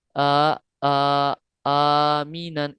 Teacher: दो हरकत, यानी आ आ आमीनन, इतना लंबा करना है।